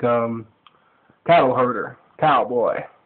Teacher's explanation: a lot of the vowels in the Texan accent are elongated